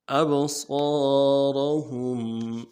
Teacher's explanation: اب صاد کو موٹا کریں گے، الف مدہ کھینچیں گے، را کو موٹا کریں گے، ہم میں جو میم ساکن ہے غنہ کریں گے